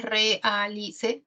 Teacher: Y en la E, realice, tenemos un hiato simple porque hay dos abiertas que se separan, tendríamos 4 sílabas, realice.